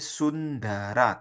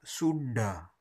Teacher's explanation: Sundara tipis Sundara ujung lidahnya di ketemu gigi